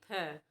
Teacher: जो स्पर्श ध्वनि है। अघोष ध्वनि है। महाप्राण ध्वनि है और दंत्य व्यंजन है। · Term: स्पर्श अघोष महाप्राण दंत व्यंजन